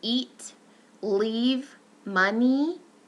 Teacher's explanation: So if we talk about front vowels, we have the E, for instance, an eat, leave, money. That is a front high tense unrounded vowel